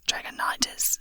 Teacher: with the stress on the third syllable